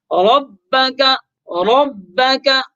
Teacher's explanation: بِأَنَّ رَبَّكَ أَوْحَى لَهَا، بِأَنَّ رَبَّكَ أَوْحَى لَهَا، رَبَّكَ میں را کے اوپر زبر، تو را کے اوپر جب زبر ہو تو را کو پر پڑھ لیتے ہیں، اور را کو پر کر کے یعنی موٹا کر کے پڑھیں گے، منہ بھر کر آواز نکالیں گے